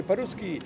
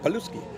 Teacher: they don't roll the R's. They can't. They pronounce an L sound instead.